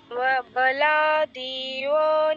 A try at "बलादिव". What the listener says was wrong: আবারও দিতে দীর্ঘ করেছেন, বলা দিবনিয়োজিতঃ।